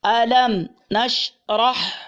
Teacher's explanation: شین قلقلہ نہ ہوگا، را پر ہوگا، ہا درمیان حلق سے